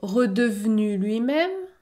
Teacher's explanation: je ne prononce pas le E dans redevenu